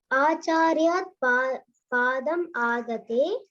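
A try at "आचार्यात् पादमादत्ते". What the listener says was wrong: See, it's acharyat, long. Adatte.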